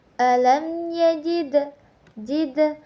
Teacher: terdapat hukum bacaan qalqalah sugra karena dal mati di tengah-tengah kalimat